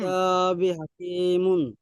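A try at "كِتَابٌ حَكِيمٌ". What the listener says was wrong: কিতাবি হবে কেন? বা দুপেশ বুন হবে, কিতাবুন হাকিমুন।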